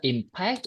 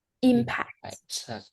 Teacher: when you stress on the second syllable, it is a Verb